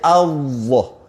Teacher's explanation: Lepas tu tebalkan. Sebutnya Allah tapi tebalkan. Taghlis ataupun tafkhim ya.